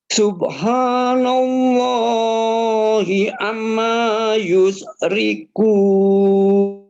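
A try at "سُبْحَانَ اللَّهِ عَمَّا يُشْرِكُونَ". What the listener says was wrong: Tahan amnya. Ditahan lebih lama guna. Subhanallahi amma.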